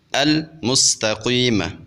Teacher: اب یہاں پہ چونکہ لام تعریف حروف قمریہ کے اوپر داخل ہو رہا ہے تو ہم لام تعریف کے اظہار کے ساتھ پڑھیں گے، یعنی لام تعریف کے لام کو ظاہر کر کے پڑھیں گے